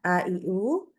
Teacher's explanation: kalau untuk Hamzah dua pita suara menutup dengan rapat sehingga tidak ada suara lagi yang lolos. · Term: sifat syiddah